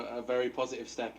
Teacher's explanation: Estuary English. He drops the T on quarter and positive, but his vowels are similar to RP. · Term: dropping his T's